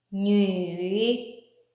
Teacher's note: The third tone is like turning tone, sharp a little bit and raise it again.